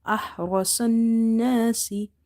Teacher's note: So ahrasan nasi, sod noon fatah son, noon alifatana, sonna, ahrasanna, sin kasra si, ahrasan nasi. Ra heavy, swad heavy, noon is having nasalization. So we will hold the noon sound.